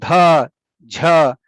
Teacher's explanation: these are really hard for the native English speaker because voice aspirated sound doesn't exist at the beginning position of a word